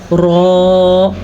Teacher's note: याद रखें, जब भी रॉ पे ज़बर हो, पेश हो, रॉ पुर पढ़ी जाती है। पुर का मतलब मुंह भर के रॉ को अदा करते हैं